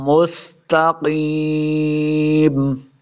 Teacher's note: سین پہ سیٹی کی آواز آئے گی